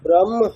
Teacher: এই পার্টিকুলার কনটেক্সটে হকারের উচ্চারণ স্থানটা হবে আমাদের বক্ষ প্রদেশ